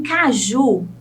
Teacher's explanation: a sílaba tônica é o ju é a última sílaba